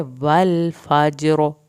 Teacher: अगर रा पे हम वक्फ करेंगे वल फज्र, रा पुर होगा। अगर हम रा पे वक्फ नहीं करेंगे तो ज़ेर की सूरत में वल फजरी पढ़ा जाएगा और रा पतला पढ़ा जाएगा।